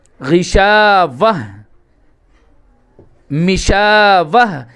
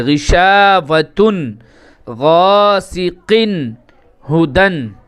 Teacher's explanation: جب ہم اس کو وقف کریں گے تو یہ تا نہیں پڑھا جائے گا، اس کو ہا بنا دیں گے